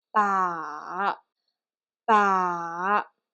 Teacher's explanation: So the first beat will be go down first, and then the second beat, you need to go up your voice a little bit. It's more like a falling tone first and rising up in the end quickly. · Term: third tone